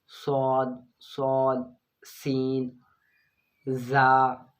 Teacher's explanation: حروف صفیریہ کو ادا کرتے وقت سیٹی کی طرح تیز آواز نکلتی ہے